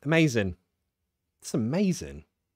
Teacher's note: Sometimes I will drop the G.